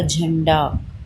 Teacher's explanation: तो झंडे में क्या न की साउंड कैसे आ रही है? नाक से आ रही है ना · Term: अनुस्वार